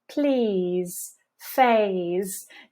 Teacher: You'll notice that when these z sounds come at the ends of words, we soften them. There's less of a buzzy sensation. The E here is silent in both cases.